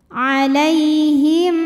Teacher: lai ada huruf lin karena ya sukun didahului fathah, maka dibacanya lembut.